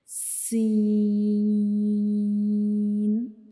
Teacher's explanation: जब हम सीन को पढ़ते हैं तो हम इसको तीन सेकंड्स के लिए लंबा करते हैं